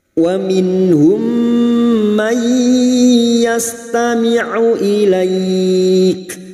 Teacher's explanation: Wa min, nun sukun bertemu ha idhar halki, nun sukun dibaca jelas tanpa mendengung